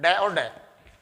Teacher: ठीक है, तो देखिए उत्क्षिप्त व्यंजन में कहा जाता है इन व्यंजनों का उच्चारण जीभ पहले ऊपर उठती है, जब इनका व्यंजन करते हैं पहले जीभ ऊपर उठती है और फिर मूर्धा से स्पर्श करती है और तेजी से नीचे आती है